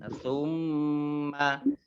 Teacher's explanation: mim tasdid ya dibaca gunnah, ditahan, summa nun sukun bertemu dengan huruf ta, bacaan ikhfa, dibaca samar-samar.